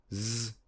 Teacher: Z is a voiced alveolar fricative.